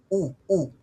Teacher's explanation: Pag pronounce mo yung U, nasa taas pa rin yung dila mo pero ni-retract mo.